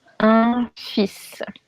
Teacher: The tricky part is that you should not say the L, but you should definitely say the S